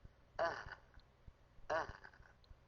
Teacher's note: الهاء وهي الحرف أيضا من أقصى الحلق تخرج باهتزاز الوترين وعدم انقفالهما، لكن بقربهما من بعضهما جدا